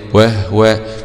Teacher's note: أسكن الهاء قارون وأبو جعفر والنحويان، وهو، ووقف عليها يعقوب بهاء السكت.